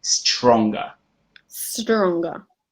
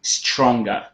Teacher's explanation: he had this very strong thing with a STR. So he would say he would pronounce it as SCH.